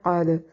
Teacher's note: قاف کو موٹا دال پہ قلقلہ کریں گے کیونکہ دال حروف قلقلہ میں سے ہے